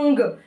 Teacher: उच्चारण किससे होता है नाक से होता है अंग किससे हुआ अंग पूर्ण रूप से नाक से करोगे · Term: अनुस्वार